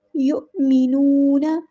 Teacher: نون کو ہم نے لمبا کرنا ہے، ایک الف کے برابر مد اصلی ہو رہی ہے